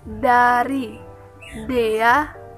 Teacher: Dilafalkan dengan menempelkan ujung lidah pada bagian belakang gigi atas untuk menghambat udara dari paru-paru dan kemudian melepaskan udara itu. Ada juga yang menempelkan ujung lidah pada gusi sehingga tercipta bunyi alveolar. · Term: konsonan hambat dental